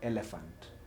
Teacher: when I say elephant, my tongue is at the hard palate. It is not in the soft palate. Hard palate, it is up front here.